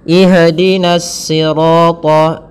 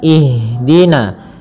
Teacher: Ha ada salah satu sifat yang dia harus kita lafalkan ketika membacanya, itu sifat hamas. Hamas artinya mengalir nafas kita, mengalirnya nafas kita. Maka jangan sampai huruf ha ini memantul.